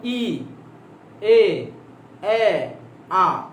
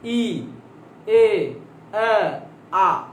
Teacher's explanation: আমি আবার বলছি ই এ এ আ, খেয়াল করছেন নামতেছে। এই দেখেন এটা বলে উচ্চ, উচ্চ মধ্য, নিম্ন মধ্য, নিম্ন।